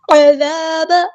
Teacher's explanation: عین کو وسطی حلق میں تھوڑا سے ادا کرنا ہے